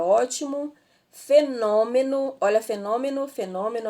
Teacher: E nós temos aí a palavra ótimo, fenômeno, olha, fenômeno aí ela é uma proparoxítona. E a sílaba tônica aí ela é a antepenúltima